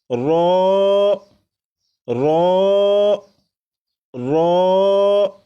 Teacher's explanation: رو کو 1 الف کے برابر کھینچ کر پڑھیں گے،